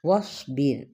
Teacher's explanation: را ساکن سے پہلے با پہ کیا ہے؟ زیر ہے یعنی کسرہ ہے، تو اس لیے را ہمیں باریک پڑھنا ہوگا